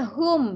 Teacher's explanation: mim bertanda mati. Jelas, pendek, tidak berdengung. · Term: Mim sukun